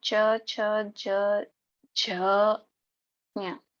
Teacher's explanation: सबका जब हम उच्चारण करेंगे तब हमारी जो जीवा है वो तालु पे स्पर्श करती है। सब ये सारे के सारे वर्ण हम उस जीवा को वहां से हटाए बिना एक साथ बोल सकते हैं। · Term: तालव्य